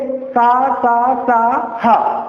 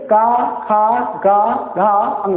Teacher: जब का खा का बोलते हैं तो गर्म हवा नहीं निकलती